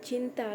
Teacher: dihasilkan dengan mendekatkan bagian tengah lidah ke langit-langit atau palatum